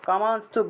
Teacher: অনুস্বার শব্দের মাঝখানে থাকায় নয়ের মতো উচ্চারণ